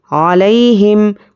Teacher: یا پر جزم اور اس کے پہلے زبر یا لین ہے، اس کو جلدی نرمی سے ادا کریں گے